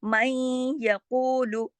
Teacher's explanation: उसके अंदर आवाज़ जो है देखें आधी होती है, आधी, इसीलिए इसको इदगाम नाकिस कहा जाता है। मैं यक़ूलु, इदगाम तो हो रहा है लेकिन नाकिस, मैं यक़ूलु, अब लू को ज़्यादा नहीं खींचना, ऊ को तो 2 हरकत खींचेंगे वाव मद्दा की वजह से, लेकिन लू को नहीं खींचेंगे, लू को सिर्फ इतना खींचेंगे जितना लिखा है, लाम पेश लू।